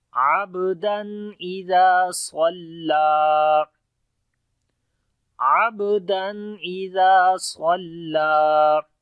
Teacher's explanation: صاد کو موٹا پڑھیں گے، لام کو بھی لمبا کریں گے، اس کے اوپر بھی کھڑی زبر ہے، تو پڑھتے ہیں عبدا اذا صلا عبدا اذا صلا۔